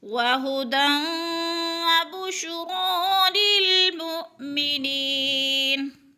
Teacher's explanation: وَهُدًى وَبُشْرَىٰ لِلْمُؤْمِنِينَ، منین پہ یا ساکن سے پہلے نون کے نیچے زیر ہے تو یا مدہ ہو رہا ہے، یا مدہ کو ایک الف کے برابر کھینچ کر پڑھنا ہے